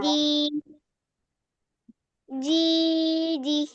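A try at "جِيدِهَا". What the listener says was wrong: না, যে দিহ কেন হবে? এখানে জবরের মানে খালি আলিফ আছে না, তাহলে এক আলিফ টানতে হবে। জি দিহা।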